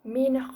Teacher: nun mati bertemu dengan ho jadi kena sebut nun mati jelas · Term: izhar halqi